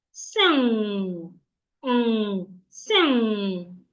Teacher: So the air that is coming from your stomach goes through your nose and comes out through your nose. If you articulate it rightly, you're going to feel weight on your nose. It's like you're carrying something heavy and you're making the sound. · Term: nasal sound